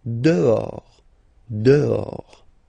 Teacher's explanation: Okay, so remember, final S not pronounced, and then this H in French doesn't exist phonetically, so you don't pronounce it